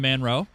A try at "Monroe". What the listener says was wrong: It's Monroe. There's no A in Mon. It's M-O-N.